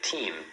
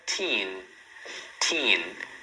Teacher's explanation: eles fazem realmente o am fechando a boca e o an colocando a língua lá no céu da boca